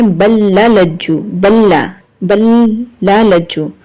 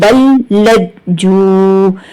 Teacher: با کو لام سے ملائیں گے، یہاں پر ادغام ہوگا